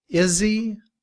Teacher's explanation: in reduced form, we drop the sound of the h and combined with is.